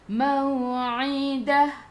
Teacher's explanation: Ta marbutah bila berhenti jadi ha. Dia tak jadi ta. Dia bertukar. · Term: Ta marbutah jadi ha